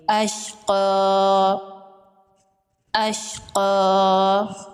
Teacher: یہاں پر جب وقف کریں گے تو یہ پڑی زبر جو ہے اس کو کھڑی زبر میں بدل دیں گے اور ایک الف کے برابر کھینچ کے پڑھیں گے۔ اشقا، اشقا، اور یا کو سائلنٹ کر دیں گے۔